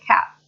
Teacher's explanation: Glottal stop means that it stops, that sound stops a little in your throat